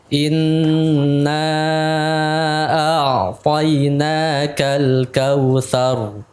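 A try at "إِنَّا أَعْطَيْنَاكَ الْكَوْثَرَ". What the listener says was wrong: Ulangi lagi, hamzahnya jelaskan. tipiskan. Tipis.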